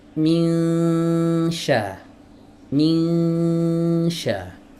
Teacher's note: saat ikhfanya berlangsung, posisi lidah itu sudah membentuk makhraj huruf syin ya. · saat kita mengucapkan ming, nah ini posisi tengah lidah udah naik, udah istiad, udah persiapan masuk ke huruf syin